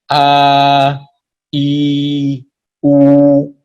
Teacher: makhrajnya 3 huruf ini ada di al-jauf, rongga dalam mulut, keluar langsung berhenti di hawa. Artinya berhenti di hawa, berarti tidak boleh nyantol suara mat ini pada makhraj-makhraj yang lainnya.